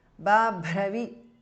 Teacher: Again, E is short in the end. Babhravi, the second Bha is Mahapranaha.